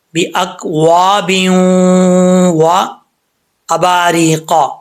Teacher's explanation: تو یہاں پہ ادغام یرملون ہوگا، ایک الف کی مقدار غنہ کریں گے